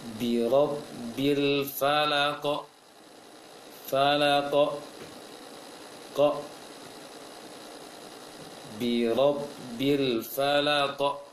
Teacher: qaf termasuk huruf tebal, maka ketika memantulkannya juga tebal dan mengarah ke O · Maka ketika memantulkannya dia langsung mantul, cuma jelas, harus jelas pantulannya. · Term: qalqalah sedang